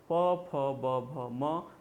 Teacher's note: द्वयोष्ठ का मतलब होता है दोनों ओठ। जब दोनों ओठ आपस में मिलते हैं और वर्ण का उच्चारण होता है तो उसे हम द्वयोष्ठ या ओष्ठ के नाम से जानते हैं